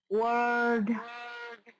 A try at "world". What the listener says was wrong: World. Try getting more oh. Can you hold the tongue behind your teeth and go oh?